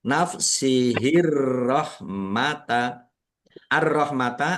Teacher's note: alif lam syamsiyah karena tidak dibaca langsung Langsung masuk ke huruf berikutnya yaitu ro ditandai rnya ada tasdidnya. Rnya dibaca dobel.